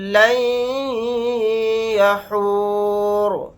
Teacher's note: را کو ساکن بنا کر پڑھیں گے حالت وقف میں. اور یہاں پر ہم آیت نہیں کریں گے تو پھر را کے اوپر زبر لگا کر پڑھیں گے.